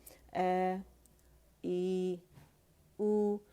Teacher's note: اخص الحلق سے آواز نکلے گی, ٹھیک ہے, ہماری الجوف سے نہیں نکلے گی